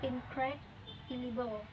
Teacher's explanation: In the words incredible, for example, the primary stress falls on the second syllable